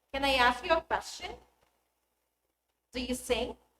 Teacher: the pitch of the voice Rises at the end of the sentence